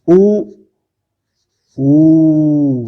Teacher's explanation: और ई, फिर आता है ऊ, देखिए ऊ, ई में फैल रहा था गाल, यानी तालू से जीभ टकरा। इसमें ऊ, कंठ से आके आवाज ओष्ठ के द्वारा ये ऊ बन रहा है।